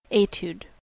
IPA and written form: ˈeɪtjuːd (Etude)